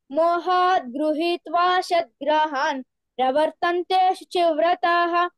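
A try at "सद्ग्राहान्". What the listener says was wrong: సద్గ్రాహాన్. Okay, ఆ సా షాలాగా వినిపించకుండా చూసుకో. Okay, సద్గ్రాహాన్ అంతే.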